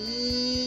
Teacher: so E is a front closed vowel produce with spread lips